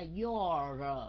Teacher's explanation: Cái âm R, âm cuối phải kéo dài, okay. Chứ không phải là do nha, không phải do, mà là your.